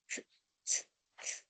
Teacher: El sonido es te vas a dar cuenta que inmediatamente apoyas tu lengua en tus dientes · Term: punto dental